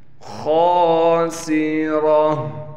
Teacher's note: خا کو موٹا کر کے پڑھنا ہے اور 1 الف کی مقدار کھینچنا بھی ہے، خا کے بعد الف ہے، سین میں سیٹی نکالیں گے، را کو موٹا کر کے پڑھیں گے۔